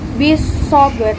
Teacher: Cara bacanya huruf lam dihilangkan idgham dan masuk ke shad. · qalqalah sugro karena huruf ba sukun berada di tengah kalimat. Cara bacanya dipantulkan ringan. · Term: alif lam syamsiyah